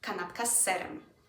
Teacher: The S gets extended in a snake kind of way.